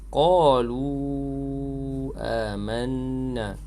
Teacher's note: Qalu satu kalimah, amanna kalimah yang kedua. Jadi mad, hukum dia mad jaiz munfasil, bacaan panjang sekadar 5 harakat